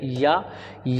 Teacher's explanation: या के उच्चारण में पूरी तरीके से तालू का इस्तेमाल होता है